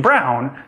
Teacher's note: Your tongue is moving from the lowest middle area up to high and back, and your lips round. You don't get a pure ah or ah. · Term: diphthongs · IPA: [aw]